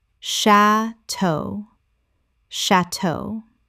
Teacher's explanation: 2 syllables with the stress on the second, from French.